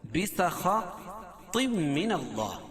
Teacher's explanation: خا اور طا دونوں کو پر پڑھیں گے، اور تنوین کے بعد ادغام مع الغنہ کے 4 حرفوں میں سے میم ہے تو یہاں غنہ کر کے پڑھیں گے۔